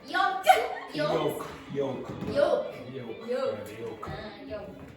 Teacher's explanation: Don't pronounce the L.